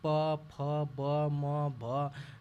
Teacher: इसमें दोनों ओठों का प्रयोग करते हैं